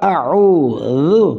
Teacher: ذال زبان کی نوک اوپر والے دانتوں کی نوک سے